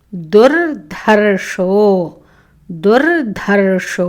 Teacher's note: దుర్ మొదటలో దా అల్పప్రాణ, దుర్ధర్షో ధా మహాప్రాణ, షా వస్తుంది